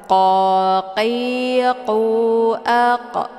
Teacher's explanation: Letak posisi huruf qaf ini yaitu di pangkal lidah. Cara bacanya, pangkal lidahnya terangkat melengket ke langit yang lunak. · قال فذوقوا العذاب بما كنتم تكفرون. Qa, ini huruf qaf adalah huruf itbaq, yaitu huruf yang harus dibaca tebal.